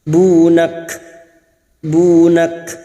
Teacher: Karena kita berhenti di sini, ciri khas huruf kaf harus dirasakan, yaitu siddah dan hams